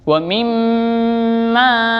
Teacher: ma-nya panjang, nah masuk mat tabi'in